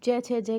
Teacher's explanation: च, छ, जय कहाँ से बोलती है, ये तालु से बोली जाती है